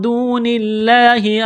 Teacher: لفظ اللہ کے نام سے پہلے زیر ہے، لفظ اللہ کے نام کو باریک کرنا ہے ، جب یہاں پر وقف کریں گے تو ہا کو ساکن